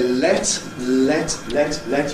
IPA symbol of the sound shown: let